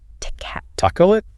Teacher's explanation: Wow, that middle vowel is just gone. Completely gone. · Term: elision